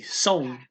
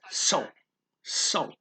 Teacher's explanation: you say the s higher then you drop down and go into a nasal